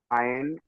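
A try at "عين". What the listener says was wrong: শোনেন, আইন নয় এটা। অনেক ভাই এমন অনেক ভাই এমন পড়েন আইন, আইন এমন নয়, আইন শেষে টান দেয়, বুঝতে পেরেছেন? আইন, 3 আলিফ টান, দেখেছেন 3 লেখা আছে, দেখেন এই চিহ্নটা 3 লেখা আছে, বুঝতে পেরেছেন? হ্যাঁ 3 লেখা আছে, 3 লেখা আছে।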